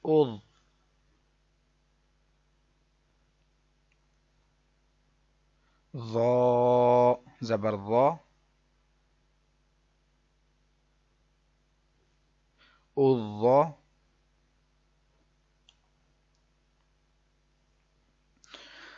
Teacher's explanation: ضا حروف مستعلیہ اس کو موٹا پڑھیں گے آپ۔ از یہ آواز بھی نہ آئے، از باریک بھی نہیں پڑھنا، اس کو سختی سے بھی نہیں پڑھنا، اور مستعلیہ حرف ہے اس کو آپ نے پر موٹا پڑھنا ہے نرمی سے۔